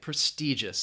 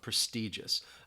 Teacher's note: That I in the middle has that long E sound